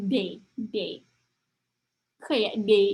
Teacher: Y-nya kayak bukan konsonan ya, ada malah jadi kayak I gitu.